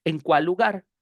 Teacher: Estas dos L's yo las junto y como es el mismo sonido, cuál y lugar, no digo cuál lugar, sino cuál lugar. Ambas comparten la misma consonante al final y al principio, entonces no hago dos consonantes, no separo cuál lugar, no hago sino que lo que hago es que lo junto.